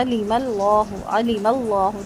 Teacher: لام لفظ جلالہ پر 2 حرکت لمبا۔ اچھا، اس کو عالمہ یا علیمہ نہیں پڑھنا، ایک حرکت پڑھنا ہے۔